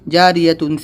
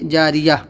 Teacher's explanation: گول تا، یعنی علی جو تا ہوتی ہے، ایک تو لمبی تا ہوتی ہے با تا والی، اور یہ ہوتی ہے تا جو ہا کے اوپر دو نقطے ہوتے ہیں۔ گول تا پر وقف کرنا ہو تو وہ ہائے ساکنہ ہا بن جاتی ہے